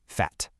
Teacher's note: The airflow is cut off abruptly, and absolutely no air is released from your mouth.